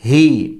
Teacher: ہا گلے کے آخری حصے سے سینے کی طرف سے، ہا کھڑا زیر ہی، پیچھے تھا ہا گلے کے بیچ سے، یہ سمپل ہے۔